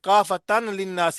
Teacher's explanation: नून शद ये गुन्ना करेंगे, नून गुन्ना शद